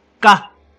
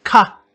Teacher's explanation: the difference between these two high tone sounds is an aspiration. One is unaspirated. If you were to speak this word in front of a candle flame, the flame wouldn't flicker, it would remain steady.